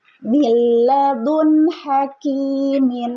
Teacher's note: Yang pertama lam dan ro. Cara membacanya memasukkan bunyi nun sukun atau tanwin ke dalam salah satu huruf lam atau ro dengan tanpa mendengung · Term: idgam bila guna